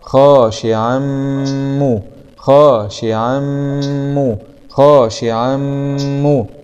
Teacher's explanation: فتحة خاء، ألف صغيرة مضى طبيعي خا، شين كسرة شي خاشي، عين فتحتين مع الإدغام بغنة في الميم المشددة مع الضم